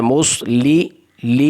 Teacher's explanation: صاد کو موٹا پڑھنا ہے اور لام کے نیچے کسرہ ہے